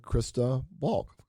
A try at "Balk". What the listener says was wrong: Pronounce the L.